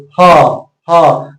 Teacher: तो आपका आवाज किससे आ रहा है कंठ से आ रहा है